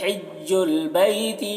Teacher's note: ہا کو حلق سے ادا کریں گے، بیتی یا میں یا لین ہے وہ یہاں پر ہو رہا ہے۔